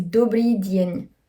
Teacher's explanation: Le D, avant le E et le I, il est toujours prononcé dans sa version faible. Ce ne sera pas prononcé de, ce sera prononcé die.